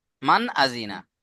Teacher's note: নুন সাকিনের পরে হামজা এসে, নুন সাকিনকে বিনা গুণনায় জাহির করে পড়তে হবে।